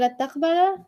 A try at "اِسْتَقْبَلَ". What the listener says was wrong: What's the original family? What's the original word? Where'd the is to go?